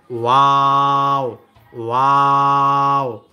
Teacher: দুই ঠোঁট গোল করে সামান্য খোলা রেখে উচ্চারিত হয় ওয়াও